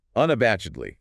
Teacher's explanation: Stress on the third syllable.